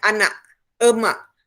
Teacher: Bunyi macam tanda soal ni ialah bunyi glotis. Bunyi glotis ni ialah bunyi untuk perkataan yang ada K di bahagian belakang.